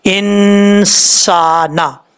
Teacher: سین ہے تو یہاں پہ اخفا ہوگا نون ساکن کا ایک الف کی مقدار